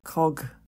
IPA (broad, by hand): kɒɡ